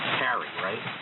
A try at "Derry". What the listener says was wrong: Derry. No, not Gary. Derry. Starts with a D, Delta.